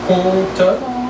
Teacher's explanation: So if between those 2 syllables you move the tongue to prepare the next one, con, you're going to have an N or an M sounding. So leave the tongue completely flat, compte, and just move the tip of the tongue for the T at the end. · The M is mute. So if between those 2 syllables you move the tongue to prepare the next one, con, you're going to have an N or an M sounding.